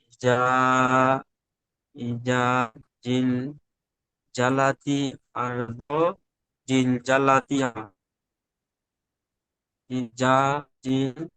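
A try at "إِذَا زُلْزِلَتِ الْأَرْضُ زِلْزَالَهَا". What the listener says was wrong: ইজা হালকা হালকা হবে, ইজা ইজা ইজা ইজা ইজা ইজা যেমন চেপে হবে না, ইজা হালকা হালকা, যা ইজা। জুল জিলাতিল, জুল জিলাতিল আরদু জিলজালাহা।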